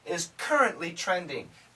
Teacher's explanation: the N kills the T there's no T